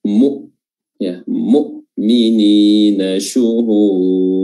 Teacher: Saya pikir di sini tidak terlalu yang penting untuk dibahas, ya, kecuali mungkin di penekanan huruf hamzah di mu'minin, ya. Di sini huruf hamzah mu'minin jangan terlalu ditekan sehingga kedengaran seperti huruf ain · Di sini huruf hamzah mu'minin jangan terlalu ditekan sehingga kedengaran seperti huruf ain mu'minin, atau tidak ditekan mu'minin. Namun huruf hamzah mu'minin, makhrajnya itu adalah aqsal halq, tenggorokan bagian dalam, bagian bawah